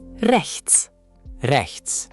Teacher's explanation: Back of throat R and a soft ch.